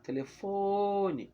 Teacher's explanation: já sei que a sílaba que eu demorei mais falando foi fo. Então, fo é a sílaba tônica.